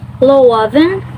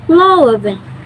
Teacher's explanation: The pitch pattern 1 starts in a low to high, while pattern 2 starts a bit higher, dips low, and then goes high. In tonem 1, loven, that translates into the law, and in the tonem 2, loven, that means warm. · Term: pitch accent